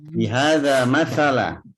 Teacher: Jadi malam hari ini saya kasih tahu cara mengucapkan huruf zal yang betul. Ujung lidah Bapak Ibu harus nempel, harus bertemu dengan ujung gigi seri atas.